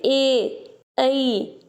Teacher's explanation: कंठ से निकल रहे हैं लेकिन तालव्य को छू रहे हैं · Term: कंठ तालव्य